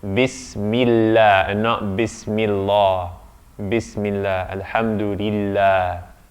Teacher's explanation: Because there's a kasra before that, there's an I before it. And so therefore the emphaticness goes away.